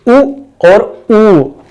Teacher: जिनके उच्चारण में हमें ओठों की सहायता लेनी पड़ती है, वो ओष्ठ स्वर कहलाते हैं,